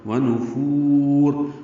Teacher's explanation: ونفور، فا کو لمبا کریں گے، را پر پڑھیں گے. ونفور، اور ملانا ہو تو را باریک ہے اور آگے اظہار ہوگا.